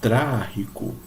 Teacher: a sílaba tônica vai ser a antepenúltima. Ou seja, a sílaba mais forte vai ser aquela que vai ter duas sílabas na frente dela ainda, não é? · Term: palavras esdrúxulas